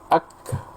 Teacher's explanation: Jadi hembusan nafasnya, ketika banyak sekali hembusan nafasnya, seakan-akan setelah kaf itu ada huruf ha. Mungkin bisa saya tulis di layar kayak gini ya, ak, ak tambah ha ya, ini ak, ak.